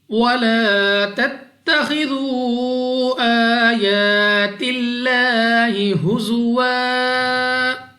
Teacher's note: اس لام آف اللہ کو باریک پڑھنا ہے اپنی آواز کو نیچے گرا کر۔